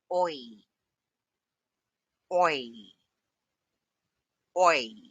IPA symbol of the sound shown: ɔɪ